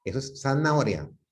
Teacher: ellos producen la Z, el interdental, lo producen de una manera que se puede entender.